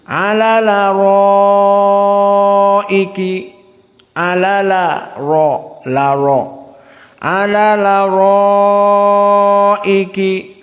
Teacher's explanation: hamzahnya dihilangkan sama sekali. Lalu harokat pada hamzah yang ara berarti fathah dipindahkan kepada lam, maka dibaca alal araiki yanzurun. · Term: dinaql